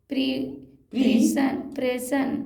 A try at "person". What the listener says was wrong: प्रेशन क्यों पर्सन क्यों नहीं ईआर को बोलते हैं कि नहीं ईआर को क्या बोलते हैं आर पी लगा तो क्या हुआ पर पर्सन